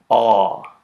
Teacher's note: the vowel at the bottom right involves the oral cavity fully open and the tongue far back